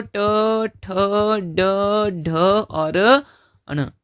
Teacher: ट वर्ग के वर्णों का उच्चारण स्थान क्या होता है? तो आप बोलोगे कि सर ये तो मूर्धा होता है।